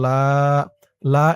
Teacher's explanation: লা এখানে ৩ আলিফ টান, মধ্যে মুনফাসিল।